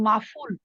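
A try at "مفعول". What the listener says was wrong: মাফউল। আইন তো আফা, আইন একটু ভিতর থেকে হয় না, মাফউল।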